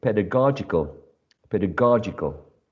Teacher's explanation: there is a shift of the stress from the first syllable in pedagogy to the third syllable, or syllable number 3, pedagogical.